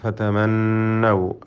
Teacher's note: ഷദ്ദ് നൽകപ്പെട്ട നൂൻ, നൂൻ മുഷദ്ദദ മണിച്ചുകൊണ്ട് ഉച്ചരിക്കുക 2 ഹറക്കത്തിൻ്റെ അളവിൽ · നൂൻ മുഷദ്ദദ മണിച്ചുകൊണ്ട് ഉച്ചരിക്കണം.